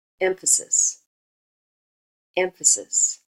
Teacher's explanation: the stress is on the first syllable there's an accent there the remaining two syllables are unstressed so those are the slack syllables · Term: stressed syllables